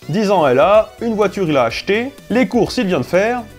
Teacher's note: l’intonation de phrase est déplacée sur le groupe verbal, afin de bien l’identifier